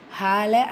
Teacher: அலிஃப் மத்தா 2 ஹரக்கத்தில் நீட்டம் கொடுக்கணும்